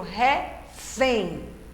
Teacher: É quando a última sílaba é a mais forte. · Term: oxítona